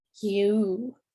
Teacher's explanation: you have U and then you have you, where you kind of go from the Y to a U sound